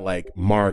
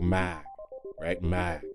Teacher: in certain dialects, that R is going to be pronounced very lightly, so it's not like Marg, it's more like mag, right?